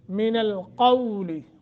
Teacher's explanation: قو نرمی کے ساتھ تھوڑا سا لمبا کریں گے، حروف لین ہے